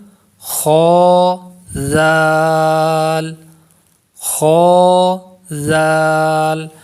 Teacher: زال کو پڑھیں گے تو سیٹی کی آواز نہیں پیدا ہوگی، زال کو ہم نرمی سے پڑھیں گے